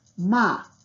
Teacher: the same syllable with an abrupt termination or a sudden cessation of the voice at the end of it